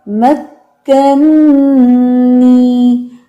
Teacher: ساکن, اور دوسرا اپنی حرکت کے ساتھ رہے گا. پہلے کو ساکن کر کے دوسرے میں مرج کیا جائے گا